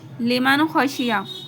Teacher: نون کو ظاہر کر کے بلا غنہ جلدی ادا کریں گے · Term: اظہار